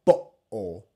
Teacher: when we say better butter bowl we are applying a glottal stop